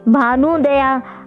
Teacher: ऊ प्लस ऊ यानी दीर्घ ऊ। देखिए भानु में ह्रस्व ऊ है और उदया में भी ह्रस्व ऊ है, तो दोनों मिलकर दीर्घ ऊ हो गए।